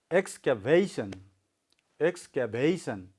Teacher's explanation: So you have to make your sound louder at vation. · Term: stress